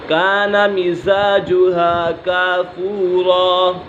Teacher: نون ساکن ہے تنوین کے بعد یہاں کاف حروف اکفا میں سے ہے تو یہاں اکفا ہو گیا، یعنی غنہ کر کے پڑھیں گے